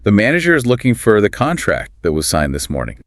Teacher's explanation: all the little function words in between get squeezed